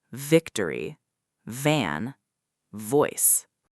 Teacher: B is pronounced with your lips completely closing together, like in the word boy. But V is pronounced with your top teeth gently touching your bottom lip, like in the word victory.